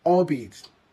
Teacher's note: Why albeit? Well, it's pronounced as one flowing unit with the stress on the first syllable